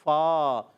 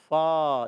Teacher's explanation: اوپر والے دانتوں کے کنارے نیچے والے ہونٹ کے تر حصے سے لگتے ہیں تو ادا ہوتا ہے فا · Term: فا کا مخرج